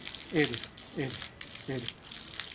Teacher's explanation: Y eso genera un efecto acústico como el sonido de la R. Para el caso de la vibrante simple es un solo golpecito pequeño. · Una cosa así. En donde la punta de la lengua golpea los alveolos